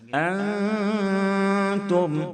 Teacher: نون ساکن کے بعد حروف اخفا کے 15 حرفوں میں سے تا ہے، اس لیے اخفاء حقیقی ہوگا، یعنی نون کی آواز کو ناک میں چھپا کر غنہ کے ساتھ پڑھیں گے